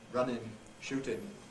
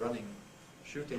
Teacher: an alternative pronunciation in not quite RP that involves an in rather than an ing